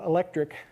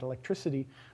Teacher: you change the k sound at the end of electric to an s you get electricity but also you shift the stress so it's